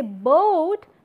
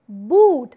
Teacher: If you say boat, then the meaning would get different, but it's boot. So it's oo sound without the interference of any other vowel, and it is pure in nature and it is in continuation